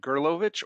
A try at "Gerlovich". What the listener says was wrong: Well, see, I got the wrong stress and emphasis on the wrong syllables. Gerlovich.